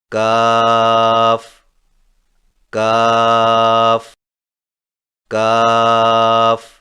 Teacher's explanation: کاف کی ادائیگی میں زبان کی جڑ کو کوے کے قریب تالو پر لگا کر باریک آواز میں پڑھیں، یعنی کاف کاف کاف۔